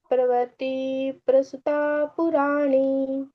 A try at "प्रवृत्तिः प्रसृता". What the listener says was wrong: प्रवृत्ति नहीं आएगा ना, प्रवृत्ति प्रसृता, विसर्ग का उच्चारण आपने बीच बीच में ना खा लिया है, उसको ध्यान से गाएंगे, ठीक है। ऐसे ही अच्छा गाया, मतलब उच्चारण के हिसाब से ठीक ठीक है, लेकिन कुछ स्किप मत करो।